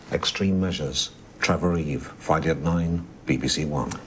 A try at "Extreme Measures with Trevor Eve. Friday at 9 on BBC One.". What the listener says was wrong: Now you're making the title sound as the title is Extreme Measures, Trevor Eve. A man called Extreme is measuring Trevor Eve.